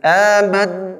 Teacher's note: Ketika huruf mim dan nun bertasydid, ya, sempurna. Amad, nggak bisa diucapkan kalau misalnya ditutup rongga hidung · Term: ghunnah